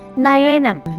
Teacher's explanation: In mallayalam the nasal sound n produced by touching the tip of the tongue to the ridge of the teeth which is called dental only comes in the word's initial position.